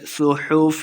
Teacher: صاد کو موٹا پڑھیں گے